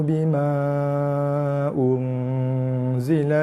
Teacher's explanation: Dengung di rongga hidung mesti panjang, lebih minimal 2 harakat ataupun lebih. Kurang je tak boleh. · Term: ihfa hakiki